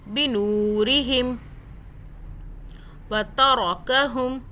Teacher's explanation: را کو موٹا پڑھنا ہے کیونکہ زبر ہے، پیش آئے زبر آئے را کو موٹا پڑھتے ہیں، زیر آ جائے تو باریک پڑھتے ہیں.